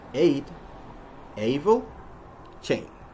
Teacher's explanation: The American A sound, on the other hand, is produced with a combination of two vowels. It starts with A, and then we glide up to an E.